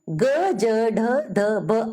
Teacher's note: तीसरी पंक्ति के वर्ण ग ज ढ ध ब अल्पप्राण है इनको बोलते समय ह ध्वनि नहीं आती अंतर देखिए मैं कैसे बोलती हूं ग पे मैं जोर नहीं